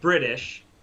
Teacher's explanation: they're saying the T, but they're pronouncing it more like a D. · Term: softened to a D